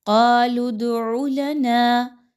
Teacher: نون الف زبر الف مدہ ہے، 2 حرکت کے برابر اس کی ادائیگی رکھیے۔